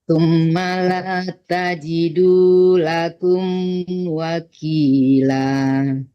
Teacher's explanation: Kalau mau berhenti malah tajidu, jangan tajid ya. Jangan dimatikan dalnya karena dalnya panjang.